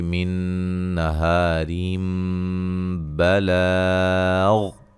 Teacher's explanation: جب وقف کریں گے تو را کو موٹا ادا کریں گے، ملانے کی صورت میں را باریک پڑ جائے گی اور نون تنوین کا اقلاب ہوگا